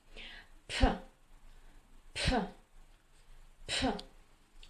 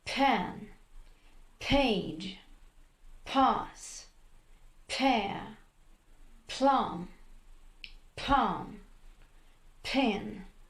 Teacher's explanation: Звук П произносится с придыханием, то есть вам нужно вытолкнуть как можно больше воздуха, когда вы произносите звук П. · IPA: [p]